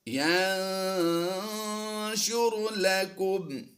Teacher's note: نون ساکن کے بعد شین حروف اخفا سے ہے، اخفا کرتے ہوئے غنہ زمانی کی آواز دیں گے